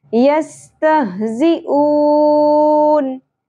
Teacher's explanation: شدت اور سیٹی کے ساتھ اون یہاں پر کیا ہوگا مد عارض وقفی یستحضون